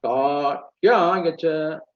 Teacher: Anudata, lower tone, immediately higher tone. No middle tone at all.